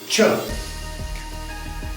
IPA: ʧ